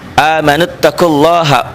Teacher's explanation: lafaz Allahnya dibaca tebel tafhim Kenapa tafhim tebel sebelum lafaz Allah ada baris domah